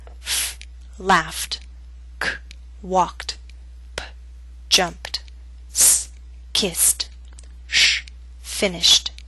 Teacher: Pronounce the ed ending as t after voiceless consonants.